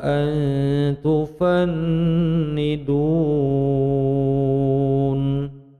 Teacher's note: Ifah hakiki menyamarkan nun sukun menuju pada huruf ta. Panjangnya dua ketukan, kemudian nunnya gunnah musadah tufan nidun mad arid li sukun 6 ketukan.